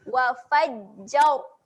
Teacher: kita matikan bunyi ra dengan ra yang tebal